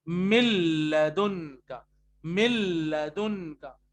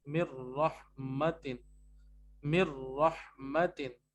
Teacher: तो रूल के मुताबिक क्या है कि नून साकिन और तनवीन की मौजूदगी में आप मिलाएंगे, और आप मिला रहे हैं. तो जब आप मिलाएंगे तो रॉ और लाम में गुन्ना नहीं करेंगे आप. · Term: नो गुन्ना